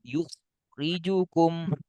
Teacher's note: Yukhrijukum, tebal kha. Kenapa tebal kha? Karena diawali dhammah.